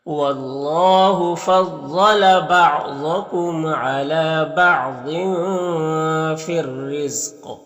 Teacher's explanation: قاف میں قلقلہ بھی کریں گے کیونکہ قاف حروف قلقلہ میں سے بھی ہے · لام میں بھی کوئی حرکت نہیں، اس کو نہیں پڑھنا ہے، رائے مشددہ کے نیچے یہاں پر زیر ہے تو را کو باریک پڑھیں گے ، قاف حروف مستعلیہ میں سے پر پڑھیں گے، اور یہاں